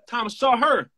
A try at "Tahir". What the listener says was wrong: Tahir. Derler tahir. Sahır yok tahir. Derler tahir.